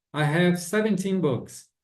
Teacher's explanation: Vocês viram que a pronúncia a sílaba tônica, a sílaba forte do 17 mudou de lugar